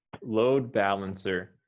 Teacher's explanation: on this word i would emphasize um load more than balancer